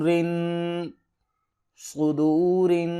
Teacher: را کو باریک پڑھیں گے کیونکہ اس کے نیچے زیر ہے